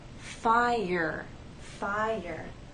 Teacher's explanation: if you listen closely there is the Y sound that connects the two vowels